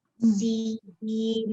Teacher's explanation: Jadi di sini disebut dengan mad lazim harfi musaqqal atau sin mim ni karena di sini huruf mad ya bertemu dengan sukun asli yang terdapat dalam huruf nun dan nunnya ini diidghamkan ke dalam huruf mim